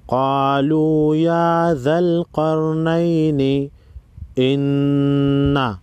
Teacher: نون مشدد پر غنہ ہوگا۔